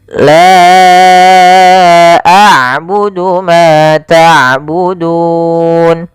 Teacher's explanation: Maka hamzahnya di lain kata. Maka panjangnya la kita panjangkan sepanjang empat harakat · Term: mad jaiz munfasil